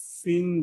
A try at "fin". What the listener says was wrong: পিন না, এটা ফা, ফা